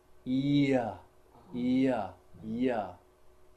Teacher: So it's e and it's a. Together become ya. It's a semivowel.